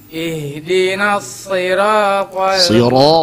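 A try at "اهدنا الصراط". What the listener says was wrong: Ro tebalkan. Ro tebalkan ronya.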